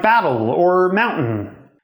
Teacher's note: There's no vowel between the t and either the ol or the n. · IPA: [bætɫ̹] or [mawntn̩]